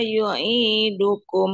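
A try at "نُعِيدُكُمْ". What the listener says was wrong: Tadi Ibu bacanya yu'idukum. nu'idukum.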